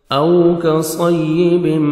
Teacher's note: واو پہ لپس کو راؤنڈ میں لے کے جائیں گے تاکہ واو اچھی طرح ادا ہو. او کاف کو باریک پڑھیں گے، صاد کو موٹا کر کے پڑھیں گے.